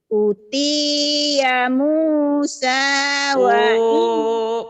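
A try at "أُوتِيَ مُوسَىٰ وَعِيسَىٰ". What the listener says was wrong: panjang.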